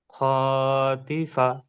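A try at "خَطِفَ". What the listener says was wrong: বাস, কিন্তু খটাকে আমরা টান দেবো না, কেমন পড়বো? খ জবর খ, ত জের তি খতি, ফা জবর ফা খতিফা। খতিফা বললে ভুল হবে, হ্যাঁ টানবো না।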